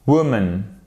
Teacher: C'est pas un ou, en fait, c'est un e. Il est fait vraiment avec l'arrière de la bouche. On travaille vraiment les sons de manière différente en anglais et notamment beaucoup plus avec la partie arrière de la bouche, ok, pour faire simple. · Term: le ou court